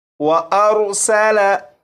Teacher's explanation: इस लफ्ज़ में सीन है, सीन को सीटी की आवाज़ के साथ पढ़ेंगे